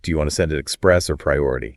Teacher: that rising intonation on or it signals to the customer that they have a choice to make